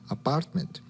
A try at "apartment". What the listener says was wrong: No, it's apartment. So the P, you're not pronouncing with enough air.